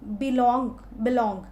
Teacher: बिलोंग first जो है वो कम स्ट्रेस है, लॉन्ग, इट इज़ स्ट्रेस्ड। तो अनस्ट्रेस्ड स्ट्रेस्ड, इस तरह का पैटर्न जब बने तो उस फुट को हम बोलेंगे कि यह आयम्ब है। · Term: आयम्बिक फुट